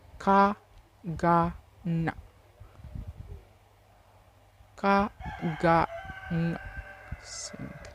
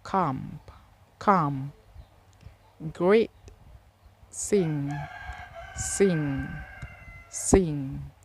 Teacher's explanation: This consonant sound are produced when the back of the tongue touch the soft palate or the velum. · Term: Velar sounds